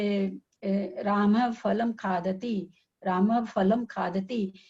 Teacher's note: राम राम फलम के बीच में ध्यान देंगे तो हल्का सा इसमें प जैसा उच्चारण अपने आप होता है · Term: उपधमानीय